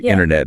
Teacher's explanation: That middle t sound just gets softened or dropped.